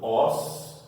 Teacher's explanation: É a antepenúltima, é a terceira. 1, 2, 3. A antepenúltima é mais forte.